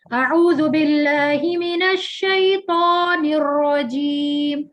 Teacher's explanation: آپ نے جب اعوذ باللہ من الشیطان پڑھا، اس میں واو کا ساؤنڈ آ رہا ہے جبکہ اس میں صرف الف کا آئے گا